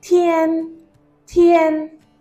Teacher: Tian with a flat tone. So tiān, tiān means any day, okay, or a duration of a day.